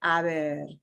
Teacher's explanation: it goes softer because then it's going to be sandwiched between two vowel sounds